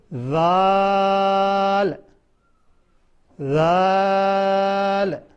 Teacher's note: फिर ऊपर वाले दांत जबान पर रखकर दाल को पढ़ेंगे। ऊपर वाले दांत जबान पे रखने हैं।